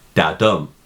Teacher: A line of iambic tetrameter comprises 4 iambs, which are metrical feet consisting of an unstressed syllable followed by a stressed syllable